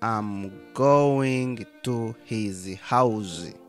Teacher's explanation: so we could possibly drop both of those h's